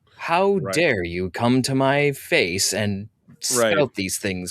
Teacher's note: where they talk at like the back of their soft palate, you can kind of hear it's a little nasally. Where it sounds like they're talking down to you.